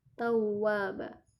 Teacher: Ada waw bertasydid, dimasukkan ke huruf waw dan mulut kita dimajukan sedikit. Tawwaba. Jadi longgar mulut yang bergerak.